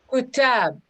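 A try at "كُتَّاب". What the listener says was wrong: You see that here's the shadda. Kuttab.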